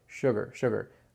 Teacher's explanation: you kind of skip over it you don't do a hard G